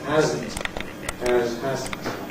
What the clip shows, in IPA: ˈhæzn̩t